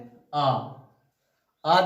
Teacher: आ जब बोलते हैं तो पूरा मुंह खुल जाता है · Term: विवरित स्वर